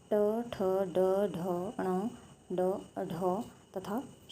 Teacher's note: मूर्धन्य यानी कि तालु से मूर्धा भाग से, तालु के मूर्धा भाग से